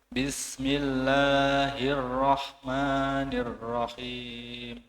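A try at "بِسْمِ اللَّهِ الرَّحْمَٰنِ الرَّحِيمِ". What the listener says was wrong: Kadar 2 harokat jangan terlalu panjang, ya. Bismillahirrahmanirrahim. Kalau memang agak cepat ya berarti durasinya dipendekkan lagi. Haknya, hak sama sin jangan terlupakan, diseret dulu.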